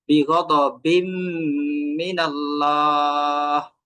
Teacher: আর এই যে 2 নম্বর যে শব্দ সেম ভাবে মিমে তাসদিদ, তাই মিমটাকে আমাকে দুই আলিফ ধরে এটাকে নাক থেকে উচ্চারণ করতে হবে। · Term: ওয়াজিব গুন্না